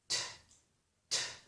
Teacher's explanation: So that means that I put my tongue in position for the T sound. That means I put my tongue on the ridge behind my upper teeth, like that, but I don't release. So I start the T, and to make the full T, I would have to release my tongue. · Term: full T sound